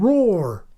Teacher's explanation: the simple rotated R which is on both ends of Roar